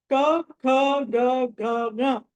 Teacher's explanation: క అన్నది కంఠం నుంచి పలుకుతాం అని చెప్పాను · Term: కవర్గం